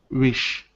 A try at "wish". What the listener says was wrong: Just watch your short I.